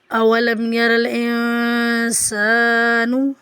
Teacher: دیکھتے ہیں اولم یر الانسان، حمزہ کی زبر کو بغیر کھینچے پڑھیں گے، واو کی زبر کو بغیر کھینچے پڑھیں گے، لام کو میم سے ملائیں گے، یا کی زبر کو بغیر کھینچے پڑھیں گے اور را کو زبر کی وجہ سے پر پڑھیں گے